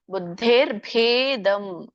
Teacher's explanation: ಬುದ್ಧೇರ್ಭೇ ದೊಡ್ಡ ಭ ಮಹಾಪ್ರಾಣ ಇದೆ. ಬುದ್ಧೇರ್ಭೇದಂ ದ ಮಾತ್ರ ಮಹಾಪ್ರಾಣ ಹೇಳ್ಬೇಡಿ, ಯಾಕಂದ್ರೆ ಹಿಂದಿನ ಮಹಾಪ್ರಾಣ ಬಂದಾಗ ಮುಂದಿದ್ದು ಕೂಡ ಮಹಾಪ್ರಾಣ ಆಗೇನೆ ಕೇಳಿಸೋದು, ಹಾಗೆ ಉಚ್ಚಾರಣೆ ಮಾಡೋದು ಸಹಜ.